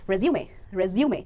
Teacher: अगर आप उस डॉक्यूमेंट की बात कर रहे हैं तो सही प्रोनाउंसिएशन होगी resume। स्ट्रेस आएगा मिडिल सिलेबल पर और प्रोनाउंसिएशन बन जाएगी resume एंड नॉट resume।